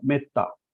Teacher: ए के आगे double consonant होने के कारण हमने उसका उच्चारण कैसा किया, एकदम शॉर्ट में किया, मेत्ता शॉर्ट में किया। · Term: ह्रस्व